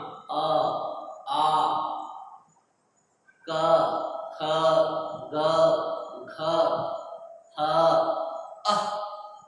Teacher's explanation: ये सारी आवाज जो है हमारी कंठ से निकलती है